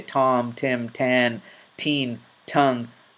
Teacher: when you pronounce the T, there's a slight exhalation